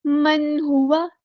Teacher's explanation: नून की आवाज़ को ज़ाहिर करेंगे, इज़हार होगा